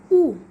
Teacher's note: तो उ जो है दोस्तों हमारा ओठ से निकलता है। उ करने पर हमारा ओठ जो है मुंह गोल सा हो जाता है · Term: ओष्ठ